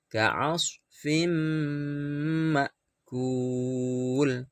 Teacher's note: Nah, sekarang kalau ada nun mati atau tanwin bertemu dengan huruf mim, maka harus dibaca idgham bi ghunnah, dimasukkan dan mendengung. Lamanya 2 ketuk.